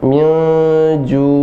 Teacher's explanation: nunnya tetap jelas terbaca, tidak dimasukkan tapi dia didengungkan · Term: ikhfa